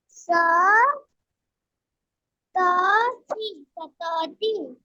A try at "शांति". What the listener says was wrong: नहीं नहीं, ये है शाह है ना, पहली बात तो ये शाह है ना। और शाह के ऊपर अनुस्वार है, यानी ये हुआ शान, शान। और आगे है ती, मतलब शांति।